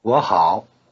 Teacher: 我, I, normally in the low tone, becomes 我 in the rising tone before the low tone of 好.